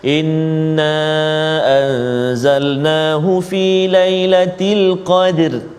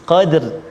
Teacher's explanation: Jadi kita kena tebalkan ataupun tafkhim ra tu. Qadr kan, jangan baca tipis.